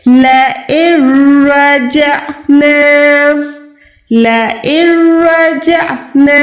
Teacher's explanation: ہم نون ساکن کو اس لیے ادا نہیں کرتے کیونکہ نون ساکن کے بعد یہاں پر را ہے، اور پورے قرآن پاک کا یہ رول ہے، قاعدہ ہے کہ جب بھی نون ساکن کے بعد را حروف آئے گا یا لام حروف آئے گا، یعنی نون ساکن کے بعد اگر آپ را دیکھیں یا لام دیکھیں تو آپ نے ہرگز نون ساکن کو ادا نہیں کرنا۔ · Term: ادغام کا قاعدہ بغیر گننے والا